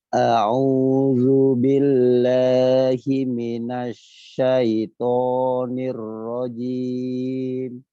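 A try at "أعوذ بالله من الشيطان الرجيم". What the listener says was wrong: Huruf ainnya Pak, huruf ainnya. Nah, dipaksakan lagi. A'u. Kalau A-nya biasa saja. A-nya biasa. A'u.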